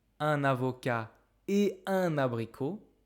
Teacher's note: I can never ever do a liaison with the word et